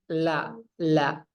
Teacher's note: Ketika mengucapkan huruf lam, itu keluar napasnya itu bukan di tengah, la, tapi di samping, la. Bisa diletakkan jarinya seperti ini di tengah, la. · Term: inhiraf